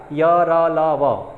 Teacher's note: अल्प प्राण तो है लेकिन ये है क्या, अल्प प्राण है परंतु ये सघोष में काउंट होता है